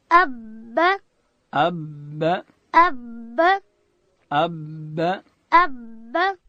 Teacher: با ادا کیږي د دواړو شونډانو د یو ځای کېدو څخه د لندې حصې څخه.